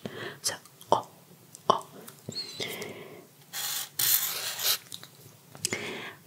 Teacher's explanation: the vowels are actually the simplest thing about French. So O, O, it's kind of more closed than in English.